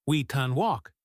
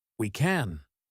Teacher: We can walk sounds like we can walk. The a in can disappears into the schwa. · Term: unstressed can